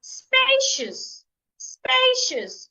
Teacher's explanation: An adjective. Two syllables. I'm stressing the first syllable.